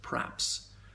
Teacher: in the word perhaps, people sometimes elide the E and pronounce it praps